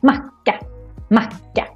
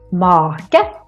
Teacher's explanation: here we have two consonants, so that's why the A gets really short.